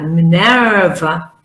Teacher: con la schwa larga